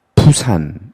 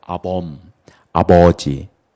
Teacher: 이 부산할 때 부라는 것은 실제로 손등에다가 놓고 발음을 해보면 부산 이렇게 발음이 푸 하고 튀어나가거든요. 무성음이거든요.